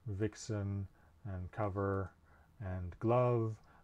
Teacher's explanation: like F, it's made by bringing the lower lip to the upper teeth.